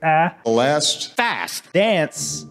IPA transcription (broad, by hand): æ